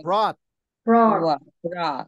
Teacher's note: 굉장히 어려운 발음인데 오하고 아의 중간 발음이라는 뜻이에요